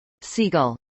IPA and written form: ˈsiːˌɡʌl (seagull)